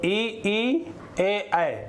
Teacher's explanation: ये अग्र स्वर में आते हैं। जब इन ध्वनियों का उच्चारण होता है तो हमारा जीभ का अग्र भाग काम करता है।